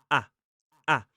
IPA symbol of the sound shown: æ